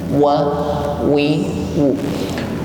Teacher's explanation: Maka ketika mengucapkan huruf waw, jangan lupa dihimpun bibirnya ke depan.